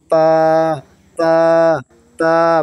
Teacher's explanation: জিব্বার আগা সামনে উপরে দুই দাঁতের গোড়ার সঙ্গে লাগে